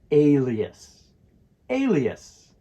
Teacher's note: In alias, the stress falls on the first syllable, so it's alias.